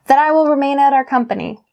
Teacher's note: You link that here to I, so you have that I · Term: linking